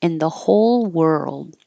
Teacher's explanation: But if it was just in the whole world, you're just going to hold the D and not hear it